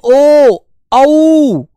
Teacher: यह कंठ और ओष्ठ दोनों के मेल से निकले